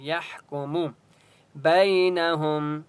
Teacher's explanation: فاللہ یحکم ہا کی آواز حلق سے نکالیں گے اور ہا کے اوپر سکون ہے، یا کو ہا کے ساتھ ملائیں گے. یحکم بینہم یا لین ہے، با کو لمبا نہیں کریں گے